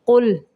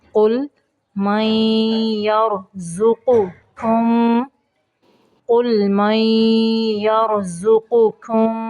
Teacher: قاف کو پر پڑھیں گے، لام کو قلقلہ نہیں کرنا